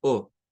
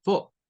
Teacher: suprimiendo el sonido de la R a la par de las vocales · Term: inglés no rótico